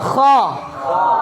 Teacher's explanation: Dibuka suaranya, tapi pangkalnya naik, pangkal lidahnya naik.